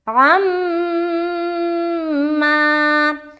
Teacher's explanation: تو اب تو یہ الف مدہ بن گیا، تو الف مدہ بھی کرنا، میم مشدد کے بعد الف مدہ بھی کرنا ہے